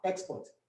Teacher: if you put the stress on the first syllable of the word export, you get the noun export. But if you move the stress to the syllable right after the second syllable, you get export, which is a verb.